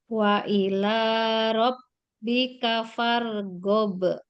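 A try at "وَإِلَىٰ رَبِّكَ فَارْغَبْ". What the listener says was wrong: Jangan go.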